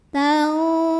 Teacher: Wa antum tau ada ikhfa awsat karena nun sukun bertemu dengan huruf dha. Maka nun sukun dibunyikan samar-samar menuju dha disertai dengungan. Nah ini dengung dan samarnya sama ya, pertengahan. Tanzurun. Ra dibunyikan secara tafkhim karena ro-nya berbaris dhammah. · Ra dibunyikan secara tafkhim karena ro-nya berbaris dhammah. Bacanya tebal, lidah diangkat.